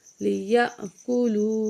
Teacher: حمزہ کو جو ہے ساکن ہے، جھٹکے سے پڑھیں گے ، کاف پیش کو، لام پیش واو لو، لیأکلو،